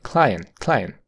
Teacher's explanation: hace una parada consonante en la t